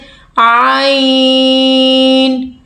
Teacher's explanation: عین گلے کے سینٹر سے